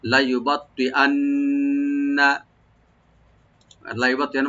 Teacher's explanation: আর নুন মুসাদ্দাদ এখানে ওয়াজিব গুন্না